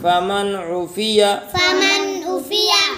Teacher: یہاں نون ساکن کے بعد حروف حلقی میں سے عین ہے، اس لیے اظہار ہے۔